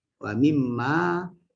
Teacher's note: dia asalnya min ma, tapi kerana nun mati bertemu mim idghamkan